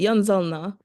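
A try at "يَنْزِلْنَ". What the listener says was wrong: Yanzilna. Again, that I will remain throughout. Kasra will remain, keep it in mind. That does not change. Kasra has to remain in all cases. So, tanzilu, tanzilani, yanzilna.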